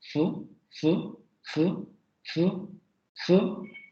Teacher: Después tendríamos las fricativas. La primera, la labiodental fricativa sorda. Fu, fu, fu, fu, fu.